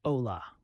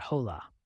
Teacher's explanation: stressing the second to last syllable, and remembering the silent H